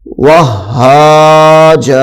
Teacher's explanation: وہاجن وقف میں وہاجا بن جائے گا